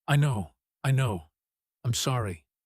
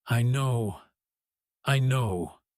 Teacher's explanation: People often repeat a phrase like, I know, quickly, with a falling, slightly apologetic tone, almost rushing through it, because they're acknowledging fault without wanting to dwell on it too long.